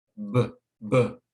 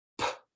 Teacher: That's the main difference between the B sound and the P sound. The B sound is voiced, the P sound is voiceless.